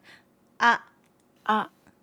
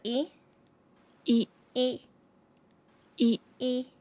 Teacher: They're short and simple, with no glide or lengthening.